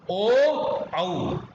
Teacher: कंठोष्ठ का प्रयोग है ओ और औ